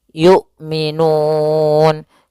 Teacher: hamzah memiliki sifat jahr dan sifat syiddahnya. Dan jelas ya maka suaranya harus tertahan nafasnya dan tertahan suaranya. Yuk. A I U tidak boleh yu tidak boleh juga y gitu ya tidak boleh dibaca dengan ain tapi dia hamzah yukminun. · Yu, a, i, u, tidak boleh yu, tidak boleh juga yu gitu ya, tidak boleh dibaca dengan ain tapi dia hamzah